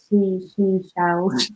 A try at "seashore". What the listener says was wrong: Yeah, the key here is to put the sh where you need it, but not where you don't. So not she, shore, or shon. Seashore shells.